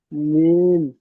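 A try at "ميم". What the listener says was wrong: জি, মাশাআল্লাহ, দেখেন, অনেক সুন্দর হয়েছে।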